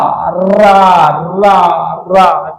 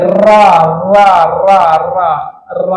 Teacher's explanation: एक है केवल रा, रा रा रा। ठीक है, रा जीभ लुढ़कती रहती है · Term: प्रकंपित लुंठित व्यंजन